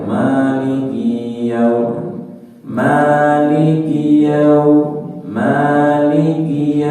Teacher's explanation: perhatikan kinnya pendek tidak dibaca panjang